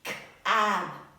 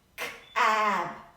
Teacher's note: I'm stretching the vowel, not the consonant. I'm stretching the vowel.